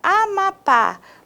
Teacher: quando eu separo em sílabas temos a mapa a última sílaba é a minha sílaba tônica inclusive é acentuada então chamamos de oxítona e acentua-se as palavras